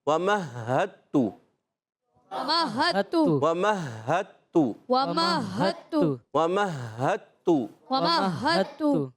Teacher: اچھا، آپ دیکھیے آگے ہے ہا، ہا پر تشدید بھی ہے، ہا ادا ہوتا ہے حلق کے نیچے والے حصے سے، مشدد ہے، ہا ذرا رک کر